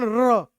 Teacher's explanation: आपको कंपन महसूस हो जाएगा, आप र बोलोगे तो कंपन महसूस होगा, र आप बोलते हो र, र बोलते समय आपकी जीभ में कंपन आता है, इसे प्रकंपित भी बोलते हैं।